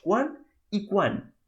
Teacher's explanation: fixeu-vos que jo les he pronunciat, però la T no ha sonat